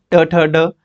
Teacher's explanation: ट ठ ड इसमें मूर्धन्य, मूर्धा के साथ जीभ लगती है